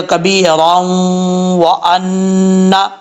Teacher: را کو واو سے ملائیں گے، ادغام یرملون ہوگا ، دو زبر کی تنوین کے بعد واو آ رہا ہے